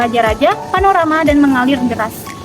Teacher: bunyi R adalah bunyi konsonan apikoalveolar getar sedangkan bunyi K adalah bunyi dorsovolar namun setelah melakukan intervensi selama